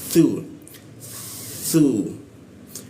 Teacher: A la masukkan la di hidung bagian bawah dia la ma masukkan ma bibirnya dirapatkan lalu tsu nah hurufsu ya ujung lidah itu digigit